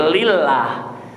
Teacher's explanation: Tapi kalau diawali kasrah itu tipis, namanya tarkik, seperti lillah. Suka ada yang baca liloh ya, tapi lillah tipis.